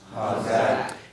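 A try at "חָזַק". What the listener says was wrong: Did you get the guttural in there? I didn't hear enough there. Didn't see enough spit fly. Chazak.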